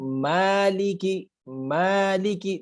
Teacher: اگر میں اس کو ملکی پڑھوں تو اس کا مطلب ہے میں میم کے اوپر زبر پڑھ رہا ہوں. لیکن اگر میں پڑھوں مالکی مالکی تو آپ دیکھیں ایک چڑھاؤ آتا ہے آواز کے اندر، ایک بلند ہوتی ہے اور ایک طرح سے آواز کو ہم کھینچتے ہیں، مالکی. لیکن اگر میں زبر پڑھوں گا، ملکی پڑھوں گا، تو یہ ایک ہی لفظ بن جائے گا، ایک ہی، اس میں کوئی حرکت نہیں آ رہی. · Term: کھڑا زبر